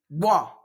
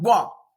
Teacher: it begins with the point of articulation, a bilabial point of articulation, but then it finishes in another point of articulation as a velar sound, begins bilabial and finishes a velar sound, boah.